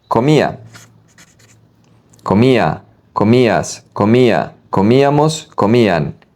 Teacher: the ending is going to be ia with emphasis on the I